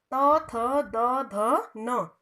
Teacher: तवर्ग का उच्चारण स्थान कहाँ से हुआ, दंत से, यानी कि दांत से